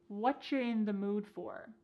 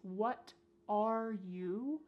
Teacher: Here the word you has been reduced to cha.